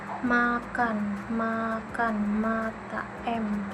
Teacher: bentuk mulutnya itu bibir rapat, udara keluar lewat hidung. Jadi bunyinya itu bunyi hidung bersuara nasal.